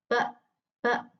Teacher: Ee udara itu tertahan sepenuhnya lalu dikeluarkan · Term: letupan